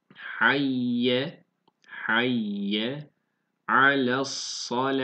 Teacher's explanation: Burada duruyoruz. Bu yuvarlak T'lerde durduğumuz zaman H diye duruyoruz.